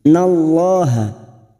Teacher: Nun yang bertasdid guna musyaddadah kita dengungkan selama tiga harakat fainnallaha lam jalalah yang sebelumnya fathah kita baca tafkim